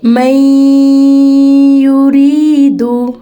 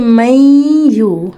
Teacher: बिल्कुल इस तरह से मदगम हुआ है कि नून की असल आवाज़ छुप गई है और गुन्ने की शेप में बाहर आ रही है। नून साकिन है और उसके बाद हरूफ यरमलून में से या है, तो यहाँ पे नून मदगम हो गई और इस पे हमने गुन्ना भी कर दिया।